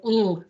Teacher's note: we have what's called a lateral approximant, which is the l sound.